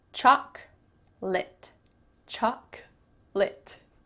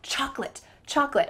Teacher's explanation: In the US, you will never hear someone say chocolate. That middle O is just cut out.